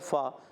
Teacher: فا ادا ہوتا ہے اوپر کے دانتوں کے کناروں سے، اور جب نیچے والے ہونٹ کے تر حصے سے لگتے ہیں تو ادا ہوتا ہے فا